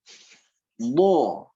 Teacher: Dia rokhawah, karena dia ada mengalir sedikit.